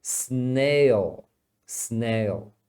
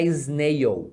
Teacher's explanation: agora o Dark L é Dark porque eles falam meio pro fundo da garganta